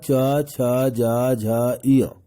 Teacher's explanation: य और तालब श का उच्चारण तालू से होता है